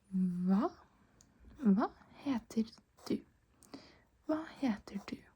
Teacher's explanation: We don't pronounce the H when there's a V coming after the H. So, since there's an H and then a V, we just ignore the H and say the V.